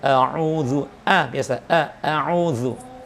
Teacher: ketika membaca a'udzubillahi minasyaitonir rajim, itu pastikan hamzahnya tetap jangan dibaca tebal